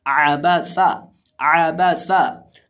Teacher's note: आइन है इसको हम हलक के दरमियान से अदा करेंगे और ये जो हमारे पास सीन है इसके अंदर हम सीटी की आवाज़ पैदा करके पढ़ेंगे